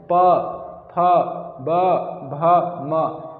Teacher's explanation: ओष्ठ मतलब हमारे ओंठ, जो हमारे ओंठ है ये आपस में टकराते हैं तब जाकर इनका उच्चारण संभव है